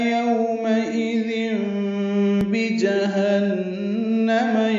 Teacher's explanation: تنوین کے بعد با آنے کی وجہ سے ضم میں اقلاب ہو رہا ہے، نون کی جگہ میم پڑیں گے